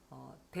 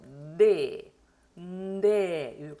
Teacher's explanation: 네도 유성음이기 때문에 대 하지 마시고 네, 네 이렇게 소리 내시면 돼요.